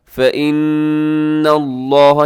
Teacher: نون مشدد غنہ ہے، آگے لفظ اللہ کو موٹا پڑے گا